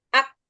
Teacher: jadi ak itu syiddahnya lalu beri aliran nafasnya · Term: sifat hams